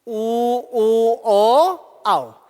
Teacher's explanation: ऊ ऊ ओ आओ, इनके उच्चारण में ओष्ठों का आकार क्या हो जाता है? गोल हो जाता है। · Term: वृत्ताकार